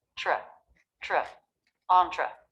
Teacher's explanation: You can see the lips are starting to flare a bit in preparation for the R sound. Next, we have the TR cluster, but most people will pronounce this CHR